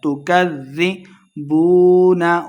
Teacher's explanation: کلا بل تکذبون، کاف کو زال کے ساتھ ملا کے پڑھیں گے، زال مشدد ہے. تکذبون، واو مدہ ہے، دو حرکات اس کو لمبا کرنا ہے